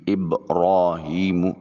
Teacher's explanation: ہا کو اقصا حلق سے ادا کریں گے. یا ساکن اور اس سے پہلے والے حرف کے نیچے زیر ہے، یا مدہ ہوگا، اس کو ایک الف کے قائم مقام لمبا کریں گے. میم کی ادائیگی کے وقت ہونٹوں کی خشکی والے حصے کو تری والے حصے کی طرف موڑا جائے گا. · را کے اوپر کھڑی زبر ہے، موٹا اور پر کر کے ادا کریں گے. ہا کو اقصا حلق سے ادا کریں گے.